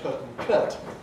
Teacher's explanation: You can get people from Newcastle on Tyne who say put and cut with really oot-like quality. You get people from Leeds, Birmingham, who have very earth-like qualities and say put and cut.